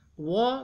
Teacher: वकारस्य दंतोष्ठम, यह बहुत महत्वपूर्ण सूत्र है। व का उच्चारण स्थान दंत और ओष्ठ दोनों से होता है।